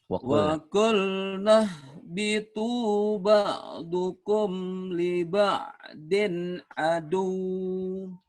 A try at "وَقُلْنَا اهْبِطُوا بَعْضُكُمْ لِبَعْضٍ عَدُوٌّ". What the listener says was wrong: Aduh gitu jangan panjang. Aduh membel doang Berhenti boleh di sini. Diterusin boleh tapi berhenti nggak apa-apa. Wa qulna bitu ba'dukum li ba'din adu.